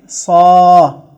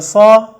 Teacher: اگر صاد کے اوپر صرف زبر ہو تو اس کو ہم کم کھینچیں گے، یعنی الف کی آدھی مقدار کے برابر کھینچیں گے. اس کو ہم پڑھیں گے صا، صاد الف صا.